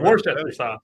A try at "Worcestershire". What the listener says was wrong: You needed more letters. That's not enough. There's another like whole word.